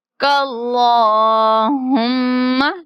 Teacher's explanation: لام پہ شد بھی ہے، کھڑی زبر بھی ہے، تو اس کو تھوڑا کھینچ کے پڑھیں گے۔